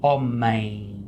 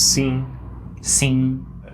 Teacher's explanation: If it ends in M, then you don't pronounce it with your lips closed like M.